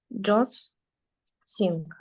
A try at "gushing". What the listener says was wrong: Gushing. So this is, you don't pronounce the S and you don't pronounce the D. So it's like a gushing.